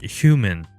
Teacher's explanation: The second allophone is a voiceless palatal fricative